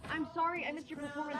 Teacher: Here's what happens when we have a word that ends in D and we connect with you or your D becomes a J sound as in Jack